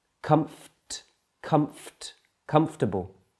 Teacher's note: comfortable in spoken English that gets reduced to three syllables comfortable can you see how the O and the r sound has been removed